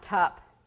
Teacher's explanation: every time they need to say K they move their tongue forward and say T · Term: phonology error